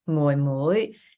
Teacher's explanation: Fourth tone, and then that second rising tone.